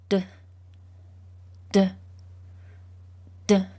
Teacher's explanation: your throat should vibrate as you make the letter D sound because it's a voice sound which means that you do use your voice box to make it